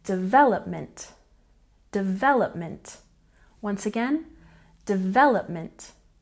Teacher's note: next we have development with a stress on the second syllable